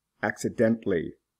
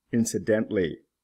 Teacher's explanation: The L is not pronounced.